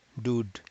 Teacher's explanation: you will end up with a with a d sound so noon n is going to become d sound so noon is going to become dude because the nasal cavity is closed